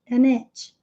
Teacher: tem o linking sound, do N com o I